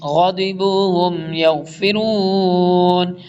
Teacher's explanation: غائن بھی موٹے حروف میں سے اور ضاد بھی اس لیے فل ٹائم موٹا پڑھیں گے